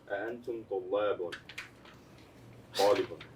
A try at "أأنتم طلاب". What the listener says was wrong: You said it right, but the way that you said that lamb was an American lamb. طلاب. طلاب. طلاب.